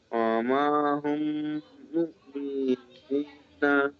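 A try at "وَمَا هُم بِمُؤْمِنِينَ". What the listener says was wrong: বি হলো না, ওয়ামা হুম বিমুমিনিনা। বি হলো না যে উচ্চারণ, ওয়ামা হুম বি, ওয়ামা হুম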